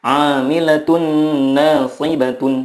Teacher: Cara membacanya adalah meleburkan nun sukun ke huruf berikutnya dan disertai gunnah yang dipanjangkan 2-3 harokat. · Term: idgham bila gunnah